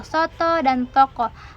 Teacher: Yang kelima ada vokal O kecil atau terbuka seperti pada kata soto dan toko